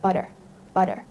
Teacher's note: አሁን የኔ ደ ስላይት ነው አይደል? ደ ሳውንድ መሆኑ ያስታውቃል፣ ግን ሳሳ ላላ ያለች ናት።